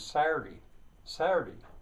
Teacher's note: very commonly, the T is simply left out. It's not Saturday, it's not a glottal stop, it's Saturday.